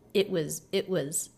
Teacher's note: we do have a stop T here which breaks up the line a little bit. It was It was But it's not really a pause because it's just a quick little lift in the line as the energy keeps going forward.